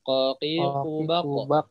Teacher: Ingat yang harus diperhatikan qaf ketika sukun jangan sampai tidak memantul tapi harus memantul, mau di tengah mau di akhir harus memantul ya